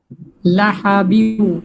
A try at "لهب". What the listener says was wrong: আরো নরমালি লাহা, বাংলায় আমরা হ বলি না, হা হা, লাহা এভাবে বলেন, লাহা। বারবার গলার ভিতরে লাহাবিউ এরকম হয়ে যাচ্ছে, লাহা হা হয়ে যাচ্ছে, হা হবে না, হবে লাহা। বাংলায় বলেন হয়াকার হা, হয়াকার হা